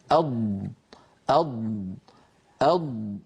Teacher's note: انظروا كيف أن الأسهم تزيد وتربو خلف اللسان. من هنا سميت الضاد مستطيلة، لأن صوتها الهواء الذي فيها يطول ويصبح أطول مما كان عليه عند بدء نطقها